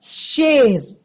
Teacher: जो आपका तालव्य श है शेर, तो ये आपका तालु से निकलता है